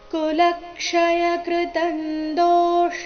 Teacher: ಇಲ್ಲಿ ಲ ಮೇಲೆ ಆಘಾತ ಬರಬೇಕು ಮುಂದೆ ಕ್ಷ ಇದ್ದ ಕಾರಣ